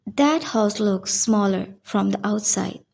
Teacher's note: سب سے پہلے T دیٹ کے اینڈ میں فل پروناؤنسڈ نہیں ہے. برٹش انگلش میں ٹی گلوٹل میں ریڈیوس ہو جاتا ہے جس کا مطلب ہے کہ آپ ٹی کو پروناؤنس کر رہے ہیں لیکن مکمل طور پہ نہیں کر رہے اور آپ اس کو ریلیز پراپرلی نہیں کریں گے.